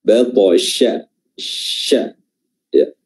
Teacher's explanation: Huruf shin ya diperjelas dengan baik, ya, diperjelas sifat at-tafasyi dari huruf shin tersebut. Ya, makhraj huruf shin adalah pertengahan lidah diangkat dan hampir bertemu dengan langit-langit atas.